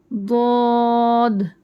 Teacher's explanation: जबान के पहलू करवट जानिब या साइड्स या कॉर्नर्स ऊपर दाड़ो को लगना है ऊपर दाड़ो के कॉर्नर्स को लगना है ठीक है और अच्छे